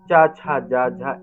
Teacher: सभी वर्णों का उच्चारण मुख्य रूप से तालु से होता है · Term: तालव्य